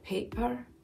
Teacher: That extra glottal catch there, paper, that's very classic Scottish. There are lots of glottal catches, lots of glottal stops in Scottish accent.